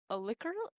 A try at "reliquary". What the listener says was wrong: Reliquary. Starts with an R. Reliquary. Reliquary. Reliquary. Reliquary.